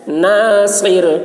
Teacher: صاد کی آواز سخت ہوگی، را باریک ہوگی